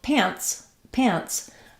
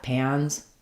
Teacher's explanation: the S sound here not z sound and second of all the vowel and the um the n Sound are much shorter in pants than they are in pans